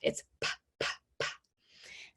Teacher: We're making a sound with our lips together, our air flow popped on our lips, and our voice off. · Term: P sound